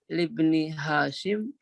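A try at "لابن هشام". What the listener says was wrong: Hishamin. ya, kalau Hashim haknya yang panjang.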